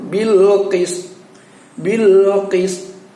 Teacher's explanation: suara tonya tersimpan, tidak jadi kita ucapkan, sehingga berbunyi menjadi bilqis, terdengar kis · Qist bunyinya adalah qist, tapi suara tonya pada saat disukunkan itu seolah-olah pingin kita keluarkan, tapi kita tahan di dalam rongga mulut